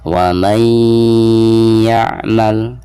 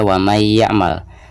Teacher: Maka selain memasukkan nun sukun ke huruf ya, itu harus ada gunahnya. Jadi ditahan dulu ya, 2 atau 3 harokat. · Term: idgham bigunah